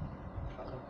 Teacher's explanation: Harusnya tidak begitu terdengar hamas atau hembusannya huruf zal.